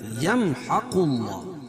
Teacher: اظہار شفوی ہوگا، یعنی اس کو ظاہر کر کے پڑھیں گے، اس میں غنہ اور اخفا نہیں کریں گے۔ يمحق اللہ، اللہ کے نام سے پہلے زبر یا پیش ہو تو اللہ کا نام پر پڑا جاتا اور یہاں پیش ہے۔